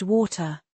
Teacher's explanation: Americans often say water with a soft t. >> Brits might pronounce a harder tau.